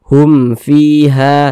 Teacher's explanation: Ini mim sukun nih, setelahnya kan huruf fa, bukan huruf ba, bukan huruf mim, maka hukumnya izhar syafawi. Karena izhar maka dibaca jelas, tidak berdengung, itu jadi dibaca pendek saja.